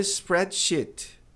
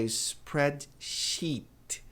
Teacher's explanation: Dê um sorrisinho e alongue esse som de i. Spreadshe. Spread sheet.